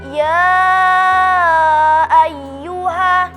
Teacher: Dalam kata ya ayyuha terdapat hukum mad jaiz munfasil karena ada mad bertemu dengan huruf hamzah dalam lain kata, dibaca 4 atau 5 harakat